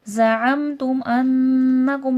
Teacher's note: نون پر تشدید ہے، نون مشدد کا غنہ ہوگا